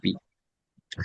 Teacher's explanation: দুই ঠোঁট দিয়ে দেখেন, দুই ঠোঁট দিয়ে বি